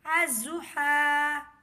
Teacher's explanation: حمزہ زوا زبر از، زوا پیش زو، الزو، ہا کھڑا زبر ہا، الضحیٰ۔ لام نہیں پڑھا جائے گا، الف کو زواد سے ملائیں گے